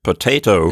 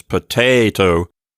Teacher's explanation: if I say the word potato, the accent is on the second syllable